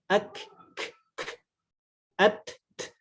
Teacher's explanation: Kita praktekkan huruf kaf dan huruf ta, itu di akhir ada napas yang mengalir sedikit. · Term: hamz